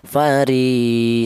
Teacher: fari panjangnya yaitu satu alif sama dengan dua harakat sama dengan atau dua dua ketukan fari seperti itu. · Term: mad thobi'i